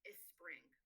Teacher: students may add a vowel in front of it and pronounce it as a spring